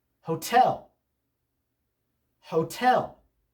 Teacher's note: the second syllable of this word is stressed